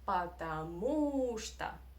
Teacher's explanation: the stress is on the syllable with U